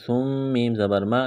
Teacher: میم مشدد ہے، غنہ کریں گے، آواز ناک میں چھپائیں گے